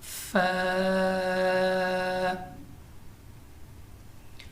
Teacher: اوپر کے دانتوں کے کنارے اور نچلے ہونٹ کے تر حصہ سے ادا ہوتا ہے. یعنی اوپر کے دانتوں کا کنارہ اور نچلے ہونٹ کا تر حصہ.